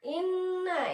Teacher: Bacanya berdengung, panjangnya 2 harkat ya. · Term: gunnah